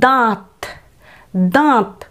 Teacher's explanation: দয়ের যখন আমরা উচ্চারণ করব তখন আমরা একটু নাকি সুরে, অর্থাৎ বাতাসটা একটু নাকের মধ্যে দিয়েও বের করে উচ্চারণটা করব।